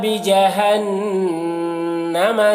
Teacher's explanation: نون مشدد ہے تو یہاں پر غنہ کریں گے